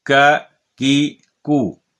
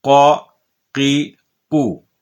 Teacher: ک کی کو، یہ باریک والا، قا قی قو، یہ پر پڑھا جانے والا